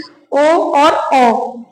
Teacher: होठ तो गोल हो ही रहे हैं गले में से और आवाज निकल रही है